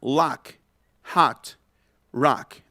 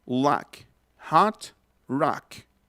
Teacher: Es una A como con el sonido de la O. O sea, suena lock, hot, rock, abriendo más la boca. Así como el lobo de Tex Avery cuando se le caía la quijada, así.